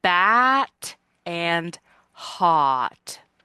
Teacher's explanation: our jaw gets its very widest for the vowels a and a like bat and hot